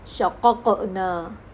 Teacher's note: ہماری زبان پیچھے سے تالوں کی طرف اٹھی، تالوں کے نرم حصے کو ٹچ کیا تو پر پڑھے جانے والے حرف میں سے قوف ہم نے ادا کیا۔